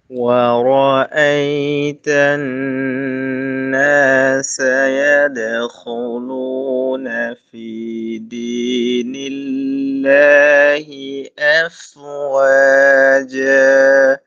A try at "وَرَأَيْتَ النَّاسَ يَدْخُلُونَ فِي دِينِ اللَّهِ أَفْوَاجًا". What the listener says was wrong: আগে একটা ফি চলে গেছে, ফির মধ্যে বাতাসটা কিন্তু কম ছিল, খেয়াল করেন পরে। ফি দি, আপনি বলছেন ফি, ফি মানে এটাকে অনেকটা চাপায় রাখছেন, চাপায় রাখতেন না, এটাকে ছেড়ে দেন। وَرَأَيْتَ النَّاسَ يَدْخُلُونَ فِي আটকানো যাবে না, ঠিক আছে? পরে সামনে ফি দীনিল্লাহি